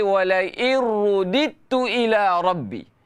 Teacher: dal ni tak ada qalqalah sebab dal tidak bertanda. Terus masuk ke dalam ta. Seolah-olah dal ni tak wujud.